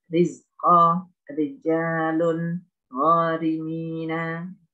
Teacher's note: Kemudian yang nomor 7, ro dibaca tarkik. Ini ketika kasroh ada ro-nya berharokat kasroh, baik di awal kata maupun di tengah.